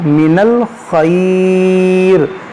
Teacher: تو یہاں پر مد لین عارض ہوگا، من الخیر کھینچ کر رکیں گے